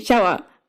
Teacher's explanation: a palatalized version of English's sh